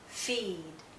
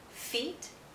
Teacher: So when there is a voiced consonant sound after a vowel sound, the vowel sound becomes longer. The vowel sound is shorter when it's followed by a voiceless consonant. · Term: longer vowel sound